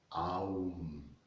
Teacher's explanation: beginning with the opening of the mouth with the sound ah then closing to the middle oh and then closing down with Ma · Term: om, sacred syllable